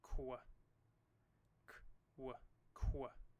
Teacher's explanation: the Q is both a voiced and voiceless sound together